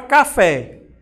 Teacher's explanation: a palavra café é oxítona porque a última palavrinha a última sílaba é mais forte